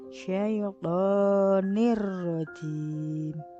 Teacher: Nun tanwin yang tadinya nin lebur menjadi ro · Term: idgham bila gunah